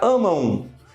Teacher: eu tenho aqui a vogal, que é o A. Ele tem um som nasal e aí aparece um som de U. Então fica amam. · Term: ditongo